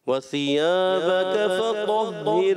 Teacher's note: अलिफ मद्दा, हरफ़े मद्दा, मद्दे असली जो होता है इसको एक अलिफ से ज़्यादा नहीं खींचेंगे।